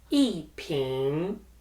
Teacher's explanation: E is in the fourth tone followed by the second tone, ping.